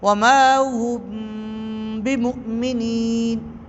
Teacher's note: نہ تو آواز اس انداز میں بند ہوئی کہ با واضح ہو جاتی، اظہار ہوتا، اور نہ ہی اس طور پر واضح ہوئی کہ میم واضح ہو جاتی، بلکہ ان دونوں میں اخفاء کی صورت، درمیانی کیفیت آئی، ان دونوں میں درمیانی کیفیت آئی، اسی لیے اسے اخفاء شفوی کہتے ہیں۔